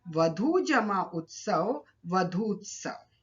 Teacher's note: वधू शब्द का अंतिम वर्ण है ऊ और उत्सव शब्द का प्रथम वर्ण है उ, तो दीर्घ और ह्रस्व उ मिलकर दीर्घ उ में परिवर्तित हो गए। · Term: दीर्घ संधि